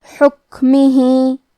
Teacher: کلمت حکم ہی میں ہا کی ادائیگی حلق کے درمیان والے حصے سے ہے